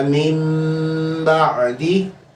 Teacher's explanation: نون ساکن اور تنوین کے بعد اگر با آ جائے تو پھر آپ نے کیا کرنا ہے، نون ساکن کو میم سے بدل کر وہاں پہ غنہ کر کے پڑھیں گے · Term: اقلاب